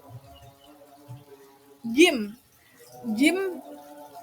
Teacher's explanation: bertemu tengah lidah dengan langit-langit atas maka terjadi hambatan udara seperti yang terjadi pada suara ekspolif berpisahnya ujung lidah dengan langit atas secara berlahan lalu keluarlah udara.